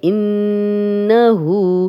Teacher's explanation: نون پہ شد ہے غنہ کریں گے. غنہ ناک میں تھوڑی دیر آواز کے ٹھہرانے کو کہتے ہیں. ہو 2 حرکات لمبا کریں گے.